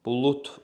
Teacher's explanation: Bulut formasında B, L cingiltili, T kardır. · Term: kar samiti